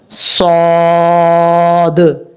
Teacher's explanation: اس کو پڑھنے میں سیٹی آئے گی اور زبان اوپر کی طرف اٹھائیں گے تو صاد پڑھا جائے گا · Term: حروف صفیریہ